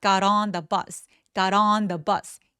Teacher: got on 하면서 연결해서 연음합니다